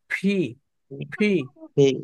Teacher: টি, টি, আপনি মনে করবেন, এই কিউ, ফি বলার সময় মনে করবেন দাঁত নাই, শুধু দুইটা ঠোঁট একসাথে রাখবেন, আর আওয়াজ দিয়ে মুখ থেকে জুড়ে প্রেসার দিয়ে বের করবেন, বাতাস ছিটকে বের হবে।